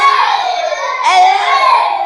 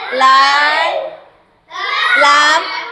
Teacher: Where is the tongue? Is behind the upper teeth. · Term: L sound